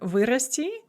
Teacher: the prefix вы bears the stress in all forms of the verb, and certain verbs with the prefix вы are always going to bear stress on the prefix in all forms, and this is one of them.